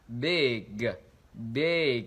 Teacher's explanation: Và tiếp theo nữa chúng ta chú ý trong từ này, đó là từ big. Âm short I là IE và chúng ta kéo dài cái âm đó ra.